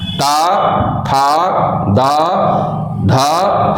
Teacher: हर बार जीभ का अगला भाग दांत को स्पर्श कर रहा है। तो जब जीभ ने दांत का स्पर्श किया, जीवा का स्पर्श दांत से हो रहा है, तो जिन जिन व्यंजनों के उच्चारण में जीभ दांत का स्पर्श करेगी वे सारे व्यंजन दंत कहलाएंगे और उनका उच्चारण स्थान दंत होगा।